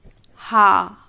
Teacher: स्वरयंत्रीय, स्वरयंत्र से कंठ के भीतर स्थित